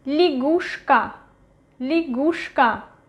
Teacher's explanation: Stress is going to U. Ya is not stressed. It is pronounced as E.